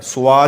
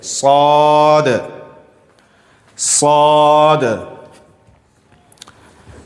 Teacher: صاد صاد. یہ سین جیسی آواز ہوتی ہے، لیکن اس میں تھوڑی یہ آواز کو موٹی کرنی پڑتی ہے. اس کو پر کر کے پڑھنا کہتے ہیں، موٹی آواز.